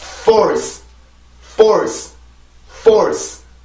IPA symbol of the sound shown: ɔr